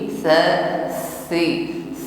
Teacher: tsa tidak berdesis ujung lidah bertemu ujung gigi